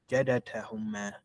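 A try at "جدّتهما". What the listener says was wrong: That dal has a shadda. Now, should have a shadda. Jadda. It's not written, but it's supposed to have the.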